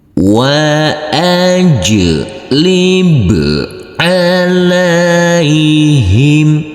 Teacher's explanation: Huruf jim yang bersukun ini harus kita pantulkan karena ini adalah bacaan qalqalah.